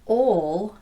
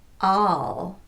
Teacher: There is no lip rounding on this vowel in American English. So this word would not be ol as it's pronounced in British English, but rather all. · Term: ah vowel